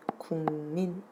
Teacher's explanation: 기역 소리가 뒤에 오는 비음 미음의 영향을 받아서 비음 이응으로 발음되는 거죠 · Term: 비음화